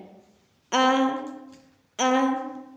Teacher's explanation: अलिफ मुँह के खाली हिस्से से अदा होता है। आ अलिफ अगर किसी भी हर्फ के साथ मिल जाए, चाहे आगे हो या पीछे हो, तो वो मुंह के खाली हिस्से से अदा होगा।